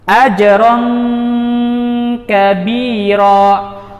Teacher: Pangkal lidah kita sudah menempel lunak ke langit-langit atas. Pangkal lidah kita sudah menempel lunak, tidak menempel secara ketat, tapi lunak ke langit-langit atas. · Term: ikhfa